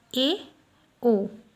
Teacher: अर्धसंवृत स्वर, इनके उच्चारण मुख आधा बंद रहता है